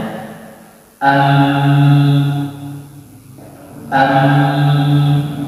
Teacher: Huruf mim memiliki sifat al-ghunnah, yaitu suara dengung yang keluar melalui al-khayshum atau romaiyum tatkala mengucapkan huruf tersebut.